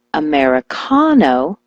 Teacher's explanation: switch the stress to the ca · When I told her to switch the stress to the ka, like Americano, she was never misunderstood again.